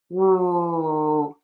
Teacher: So to fix this, just think about oo your lips are rounded, tongue is just flat in the middle of your mouth and the air keeps going out. Oo, your voice box is on and moving. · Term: w, W sound